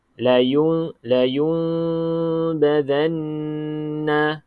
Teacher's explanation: Cara yang pertama, kita dengung dengan ada sedikit regangan antara bibir atas dan bibir bawah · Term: iqlab